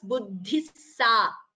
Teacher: the visarga combines with sa and it becomes buddhissa.